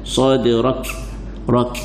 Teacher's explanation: Huruf sad adalah huruf isti'la, kena baca tebal